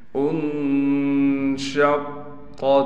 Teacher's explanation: قاف پر تشدید ہونے کی وجہ سے ٹھہراؤ بھی کریں گے اور قاف کو موٹا بھی پڑھیں گے